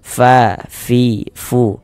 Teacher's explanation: kita mengucapkan huruf fa itu harus ada nafas yang mengalir ketika kita mengucapkannya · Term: sifat hamas